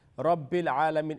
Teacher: the ayn is going to be long because it's got a standing fatha, which is in a place of alif madda. So the alif, Rabbil Alamin, in between Rabbi and Alameen, alif is silent as well, yeah?